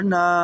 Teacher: نون الف کے اوپر جو مد ہے اسے دو یا ڈھائی الف کے برابر کھینچ سکتے ہیں